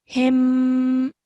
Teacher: you would pronounce this mim sakin with a 2-second nasal sound. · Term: ikhfa mim sakin